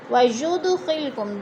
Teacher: دال ساکن ہے، حروف قلقلہ میں سے ہلا کر پڑھیں گے